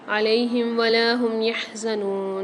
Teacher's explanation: لام کے ساتھ الف آ رہا ہے، نون کے ساتھ واو ساکن آ رہی، دونوں کو ایک ایک الف مقدار کھینچیں۔